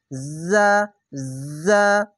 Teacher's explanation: এই যা উচ্চারণ করতে গেলে ঝিনঝিনা আওয়াজ হবে